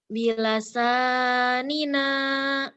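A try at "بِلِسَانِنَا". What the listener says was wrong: Bukan bilasa, bilisa. Bili. Bilisanina.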